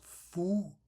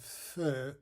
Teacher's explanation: using the back rounded vowel in place of this front rounded vowel, which will change the meaning of a word